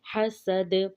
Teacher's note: سین کو واضح کریں گے اور دال پر قلقلہ کریں گے